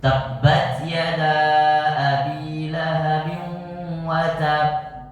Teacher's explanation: Nah, kalau watab itu akbar. Watab itu akbar. Tahan baru lepaskan. Jadi pantulannya lebih besar.